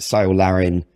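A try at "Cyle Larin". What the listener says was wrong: Sile, his name is Kyle. No, it's Kyle. It's a hard C. Like, cunt.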